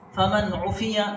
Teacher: نون ساکن کے بعد حروف حلقی میں سے یعنی اظہار لیٹرس میں سے عین آیا ہے، اس لیے یہاں اظہار ہوگا، ناک میں آواز نہیں جائے گی